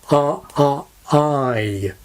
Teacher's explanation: in a word like I, the vowel begins with a very open quality, a bit like the vowel quality in arm. So we get I.